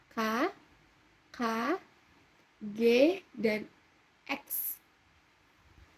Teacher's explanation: Lalu ada konsonan velar atau dorsovelar. Nah, konsonan ini dihasilkan oleh belakang lidah sebagai artikulator dengan langit-langit lembut. Sebagai artikulasi belakang lidah nih, di tengahnya nih, A, itu dia menyentuh langit-langit.